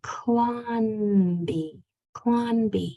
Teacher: make sure that your tongue goes to the top of your mouth and stays there on this n Sound